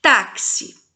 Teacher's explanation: Por que que tem cinco fonemas porque o X tem o som de cs